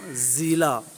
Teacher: یہاں اخفاء کا قاعدہ جاری ہونے کی وجہ سے اخفاء کریں گے اور زا پر سیٹی کی آواز آئے گی، زیلا اس طرح پڑھیں گے۔